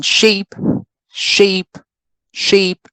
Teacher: the length of the vowel is shortened right we don't say sheep right we cannot sustain the sound as long as we want to right we have to shorten it we have to